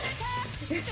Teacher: the HY is actually a little bit, it tends to be the palatized H instead of the regular H. So instead of just being like, huh, it's like, so to make it smoother, I actually do OTOVC transitions for these.